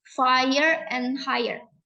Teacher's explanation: This triphthong combines the A sound as in right with the schwa sound.